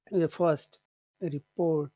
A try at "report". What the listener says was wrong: It's not pronounced report. It's pronounced report. Which syllable? It's the second one. That's very important to notice. Which syllable has all of the power?